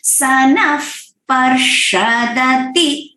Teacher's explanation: second line है सनफ पर्षदति, यहाँ पे न के बाद जो विसर्ग है फॉलोड बाय प, तो फ साउंड आएगा